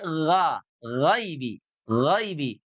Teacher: Yaitu dari tenggorokan terdekat dengan pangkal lidah · Gha bukan gho, bukan monyong ya, tapi gha, ghaibi, ghaibi. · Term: huruf gha